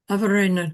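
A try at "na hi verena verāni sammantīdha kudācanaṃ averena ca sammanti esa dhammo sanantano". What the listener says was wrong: No, for this, particularly for this word, you slip right back into English. I know it's a bit unnatural to us in English to talk averena because you want to stress the a of ena slightly. So the preceding vowel, by the natural phonetics of English, we would naturally want to shorten.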